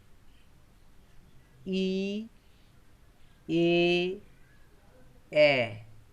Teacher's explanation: দেখো এইখানের মধ্যে হর্ষ ই, এ এবং এ, এই তিনটি স্বরধ্বনি উচ্চারণের সময় জিভটি সামনের দিকে এগিয়ে আসে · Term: সম্মুখ স্বরধ্বনি